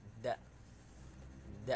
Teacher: Kemudian itu ada huruf dal, itu punggung ujung lidah dan pangkal dua gigi seri muka yang atas, da. Kemudian ada za, sama seperti da, punggung ujung lidah dan ujung dua gigi seri yang atas, za.